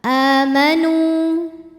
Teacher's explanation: maka cara bacanya Nun dipanjangkan dua harakat